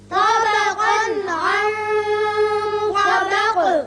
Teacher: طا کو پر پڑھیں گے طا، اور قاف کو بھی پر پڑھیں گے، لیکن اس کی جو تنوین کا نون ہے اس کا اظہار ہوگا آگے، چونکہ عین حروف حلقی میں سے آ گیا.